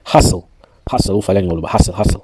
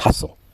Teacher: Hustle, hustle. On prononce ça comme ça. On ignore le T.